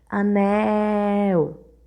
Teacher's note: Demoramos mais na sílaba nel. Por isso, ela é a sílaba tônica da palavra, nel. E como ela é a última sílaba da palavra, ela é oxítona.